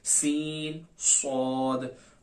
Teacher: इनमें फर्क ये है कि सीन और सौद दोनों के अंदर सीटी की आवाज तो आएगी, लेकिन सौद जो है वो सीन के मुकाबले में मोटा किया जाएगा।